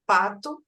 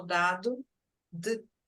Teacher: Então eu tenho oclusivas com bloqueio total de ar